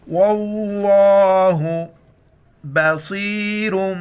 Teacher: ہے اور غین کا ساؤنڈ آ جائے بلاغ وقفاً بلاغ واللہ لفظ اللہ سے پہلے واو پر زبر ہے لفظ اللہ کو موٹا پڑھیں گے